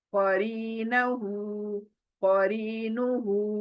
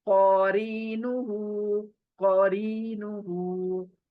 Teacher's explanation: क मोटी, री खींचना है, नू जल्दी, हु खींचना है